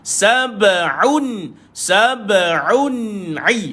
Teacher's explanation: Ada dua pertemuan ain. Sab'un pun tolak dekat tengah kerongkong. Jangan pergi hidung, tolak ke situ.